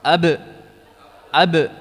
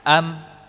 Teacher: kalau ba dia ditekan, dirapatkan, benar-benar rapat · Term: huruf ba